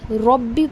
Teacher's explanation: کیونکہ رو کے اوپر زبر ہے، رو کو ہم موٹا کر کے پڑھیں گے